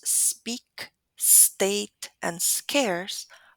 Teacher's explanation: the voiceless consonant after s is not going to be aspirated because the Assa sound has already used a lot of that